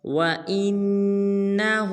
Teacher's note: آج کے جو ہمارے لیسن کی آیت نمبر 1 ہے وہ ہے وَإِنَّهُ، اِنَّ پہ غنہ کریں گے، بعض مسلمان اس کو پڑھ دیتے ہیں وَإِنَّهُ، یہ بالکل غلط ہے۔